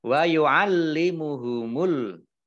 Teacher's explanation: lamnya dibaca double, ada tasdidnya